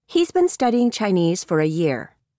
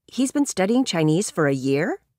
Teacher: Notice the falling intonation for statements and rising intonation for questions.